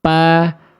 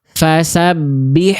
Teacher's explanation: Kalau fa kan ujung gigi seri atas dengan bibir bawah bagian dalam ngalir nafas.